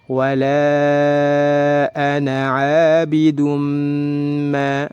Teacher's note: ditahan 2 harokat karena dihukumi idgham bi gunnah, dimasukkan dan ditahan 2 harokat disertai dengan gunnah